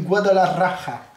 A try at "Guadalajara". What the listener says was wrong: Non, c'est Guadalajara. C'est Jara, pas Raja.